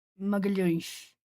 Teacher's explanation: If that person was Portuguese from Portugal, then it would probably sound almost like an SH.